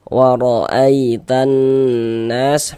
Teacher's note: Contoh dalam bacaan ada huruf ya sukun atau ya mati, sebelah sininya ada harokat fathah, ini tanda baca fathah. Maka huruf ya sukunnya huruf lin. Maka kita baca lunak, kita baca lembut.